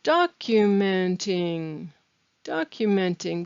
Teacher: documenting with the stress on the beginning of the word